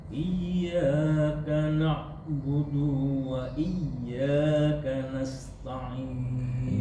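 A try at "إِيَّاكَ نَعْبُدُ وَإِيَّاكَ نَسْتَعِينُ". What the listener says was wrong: Du tidak panjang.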